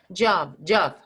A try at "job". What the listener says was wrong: Is yeah, the J is stronger.